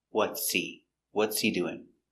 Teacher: he is not important it's not stressed so the H is silent